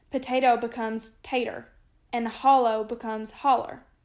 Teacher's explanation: those from this region of Kentucky tend to add er on to the end of words